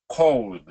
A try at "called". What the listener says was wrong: Okay, so they both actually sounded like the second one to me. So we want to get the called, all. So all. So do this for me, all. Yeah, all. call.